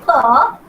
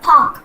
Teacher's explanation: When you say pa, there's a kind of explosion happening inside your mouth.